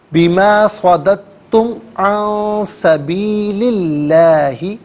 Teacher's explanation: درمیان میں دال ساکن ہے، اور اس کے بعد تا مشدد ہے، تو یہاں پر دال کی آواز نہیں بلکہ تا کی آواز کو ادا کیا جائے گا